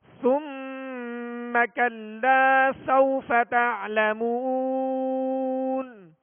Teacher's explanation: ثم پہ غنہ کریں گے، میم مشدد ہے، اور کلا لام کے ساتھ الف مدہ ہے، ایک الف کی مقدار میں کھینچ کر ادا کریں گے